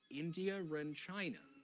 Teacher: So in regular RP, we join them with an R.